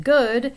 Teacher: G as in good, a voiced velar stop